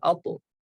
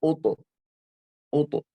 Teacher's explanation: ता को बारीक पढ़ना है, तौ को पुर पढ़ना है, यानी मोटा पढ़ना है